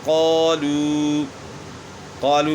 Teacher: یہاں قاف جو ہے موٹے حروف میں سے تو الف بھی موٹا پڑا جا رہا ہے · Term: الف موٹا